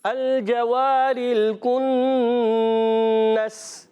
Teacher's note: کاف جو ہے زبان کی جڑ اور تالو کے سخت حصے سے کاف ادا ہوتا ہے. اور نون مشدد ایک الف کا غنہ کریں گے.